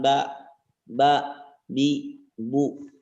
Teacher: Pengucapan huruf ba adalah bersentuhan antara bibir atas dengan bibir bawah. Sifatnya diucapkan dengan tidak mengalirkan nafas.